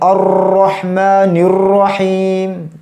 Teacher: satu kali getaran untuk ro ya